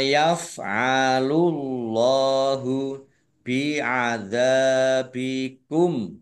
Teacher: Allahnya dibaca tebal karena harakat di depannya domah